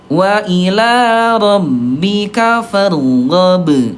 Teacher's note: huruf ba dia syiddah, huruf yang kuat, kalau sukun gak bisa lanjut, suaranya tertahan. Karena tertahan dia masuk ke sifat yang lain namanya qalqalah.